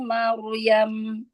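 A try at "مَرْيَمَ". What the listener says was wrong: Dikata Maryam, ro-nya jangan nutup. Maryam. Enggak maru.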